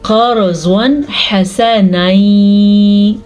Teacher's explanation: تو نون ساکن یا تنوین کے بعد حروف ہلکی میں سے کوئی حرف آ جائے تو نون ساکن اور نون تنوین کی آواز کو ظاہر کر کے پڑھنا ہے اور بغیر غننے کے پڑھنا ہے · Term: اظہار